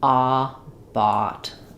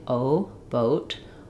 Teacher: open like an ah, but a little bit rounded. Watch that you don't do more of an O. You don't want it to sound like boat.